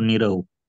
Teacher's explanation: र च्या पुढे र हा वर्ण आल्यास र चा लोप होतो. त्यामागील स्वर ऱ्हस्व असल्यास दीर्घ होतो.